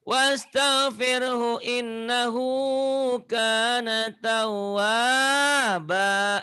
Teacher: Wah, wanya panjang, matobi'i. Hu-nya pendek.